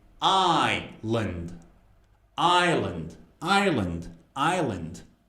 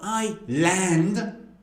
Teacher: The second part has a schwa. So it's not I-land.